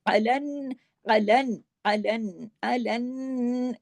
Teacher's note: نون پہ تشدید ہے، نون پہ غنہ ہوگا، عین کو عین کی طرح پڑھنا ہے، الف کی طرح نہیں، حمزہ کی طرح نہیں